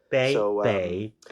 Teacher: it's not really a bay, it's more of a P that isn't aspirated.